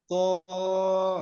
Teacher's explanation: মোটা করতে হবে, জিহ্বার গোড়াকে চাপ দিতে হবে, তটা মোটা হরফ।